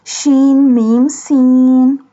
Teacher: Sheen and seen pronounced like a whistle sound.